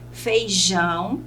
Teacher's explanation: a sílaba tônica é o Jão, a última